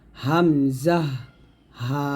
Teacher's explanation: হামজা এবং হা দুইটি হরফ আমরা হলকের শুরু হতে উচ্চারণ করব